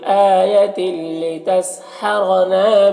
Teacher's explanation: تنوین کو لام سے ملا کر بغیر غنہ کے پڑھیں گے، اس کو ادغام تام کہتے ہیں۔ لتسحرنا، را کو پر زبر ہے تو را کو پر پڑھیں گے، نام الف مدہ ہے، بہا میں بھی الف مدہ ہے، تو اس طرح سے پڑھیں گے۔